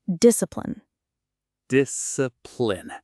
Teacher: The final syllable is reduced. It's not a full pline, it's more like plin.